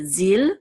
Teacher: This shava will not be sounded.